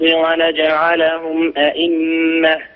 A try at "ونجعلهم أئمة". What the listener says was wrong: ونجعلهم أئمة. الهمزة الثانية مسهلة، أنت تقرأ لي قالون. نعم حقق الهمزة الثانية إذن أئمة.